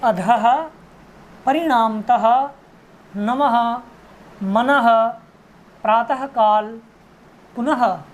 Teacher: क्योंकि ह का उच्चारण जो है कंठ विसर्ग का जो उच्चारण है वो ह के समान है, इसीलिए इनमें जहाँ भी विसर्ग जुड़ा है वहाँ ह के समान ध्वनि आएगी